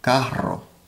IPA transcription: ˈkaro